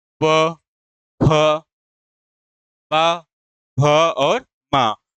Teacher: जैसे प होठ टच हो रहे हैं ना? इसी प्रकार जिसका उच्चारण दोनों होठों से होता है या दोनों होठों के मेल से होता है उसे हम कहते हैं ओष्ठ व्यंजन।